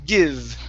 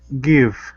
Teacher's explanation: instead of saying Gibb with the B sound it's V